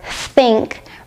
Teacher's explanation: requires your tongue to poke out between your top and bottom teeth. Your tongue should be a little tense and you should blow out air without using your vocal cords. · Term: unvoiced th sound